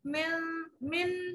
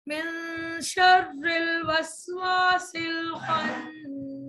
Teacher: اخفاء حقیقی کا قاعدہ کہلاتا ہے. یہ ناک میں آواز لے جائیں گے, نون کا اظہار نہیں, اخفاء ہوگا, چھپایا جائے گا